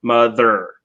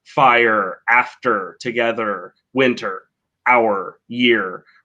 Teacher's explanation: If you're, trying to speak British English with a more British accent, you wouldn't pronounce the R there. And if you are trying to speak with more an American accent or a Canadian accent, you would pronounce the R.